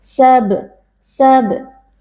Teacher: membacanya dengan suara yang memantul dari makhrajnya yaitu dari asyafatain atau dari bibir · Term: Qalqalah Sugra, qalqalah sughra